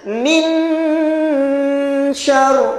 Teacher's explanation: min syar, dengung juga. Tapi lidah kita matikan kat langit-langit. Min syar. Maka bila min syar, dia terputus.